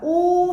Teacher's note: 중모음 봅시다. 발음할 때 입이 조금 더 벌어지고 혀의 위치가 중간입니다